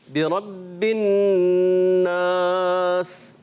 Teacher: बिरब्बिन नास बा जो है ना ये मुशद्दद है और हुर्फ़े क़लक़ला से है, तो इसको जमाओं के साथ पकड़ के फिर अदा करना है.